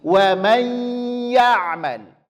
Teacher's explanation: Menyempurnakan penyebutan idgham bi gunnah pada huruf ya yang pertama, bunyikan dia ke huruf I. Kesalahannya adalah bunyinya ke huruf E.